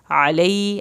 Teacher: आइन हल्क से पढ़ेंगे